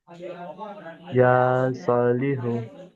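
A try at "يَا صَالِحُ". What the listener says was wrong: এখানে একটু ভুল হয়ে গেল। ইয়ার উপরে কি আছে? ইয়ার উপরে খাড়া জবর আছে তো? খাড়া জবর কেমন পড়তে হয়? আচ্ছা, সদের উপরে কি আছে? কেমন পড়তে হয়? তাহলে এই দুটোকে এক আলিফ টান দিয়ে পড়তে হবে। দুটোই টান হবে, এক আলিফ এক আলিফ।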